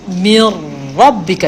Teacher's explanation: Mir rabbika daripada makhraj mim, lepas tu terus gerak lidah masuk ke bahagian kawasan permulaan langit.